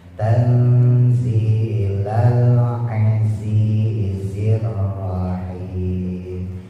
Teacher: Zainya ujung lidah taruh bawah, sama kayak sin, ujung lidah taruh bawah antara gusi bawah sama gigi bawah.